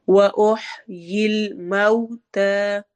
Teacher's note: وَأُحْيِي الْمَوْتَى، واؤ میں ہونٹ گول ہوں گے، اوہ ہا حلق کے درمیانی حصے سے نکلتا ہے، مئو واؤلین ہو رہی ہے، اس میں ہمارے ہونٹ گول ہوں گے، اس کو ہم نے موتا نہیں پڑھنا بلکہ موتا پڑھنا ہے.